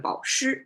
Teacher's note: if you tone it to flat instead of 保时, you make it 保湿, means keep them moist.